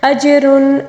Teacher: جیم کے اوپر جو ساکن ہے اس کو قلقلے کے ساتھ پڑھیں گے